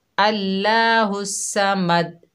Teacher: अल्लाह यानी अल्लाह के नाम को बारीक पढ़ती हैं, हुस्समद स्वाद की जगह सीन पढ़ती हैं, बिल्कुल भी स्वाद नहीं पढ़ती और दाल पर कलकला बिल्कुल भी नहीं होता